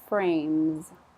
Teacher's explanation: I'm looking for the z on the end, but it's very slight. It's very soft.